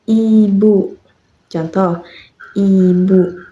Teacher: Pelafalan ibu, vokal I, diucapkan dengan mulut sempit, bibir menyamping, suara nyaring.